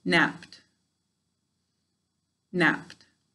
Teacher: right because we need a vowel sound to have a syllable when it's saying its second sounds d and there's no vowel sound there so it doesn't get its own syllable even though there is a vowel in it right so napped